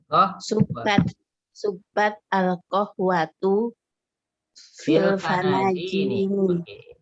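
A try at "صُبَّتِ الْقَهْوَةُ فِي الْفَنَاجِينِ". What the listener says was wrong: Oke, boleh subbat al-qahwatu atau subbatil kan? Ya, karena sukun ketemu sukun. Subbati al-qahwatu fil fanajini.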